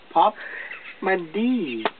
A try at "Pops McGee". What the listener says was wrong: Not D. Gee. McGee.